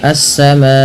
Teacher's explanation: Alif lam syamsiyah yaitu alif lam yang tertulis dan kemudian diidgamkan kepada huruf setelahnya itu huruf sin sehingga sinnya berharakat tasdid · panjangkan bunyi ma karena ia dihukumi dengan bacaan mad wajib muttasil. Terjadi sebab karena adanya hamzah yang datang setelah huruf mad berupa alif, maka bunyi suara ma dipanjangkan empat atau lima harakat.